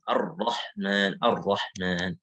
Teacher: sembunyikanlah takrir ya idza tushaddadu apabila dia bertasydid. Ya maksudnya sembunyikan di sini ya maksudnya adalah bukan menghilangkan sama sekali tetapi ada sedikit gitu.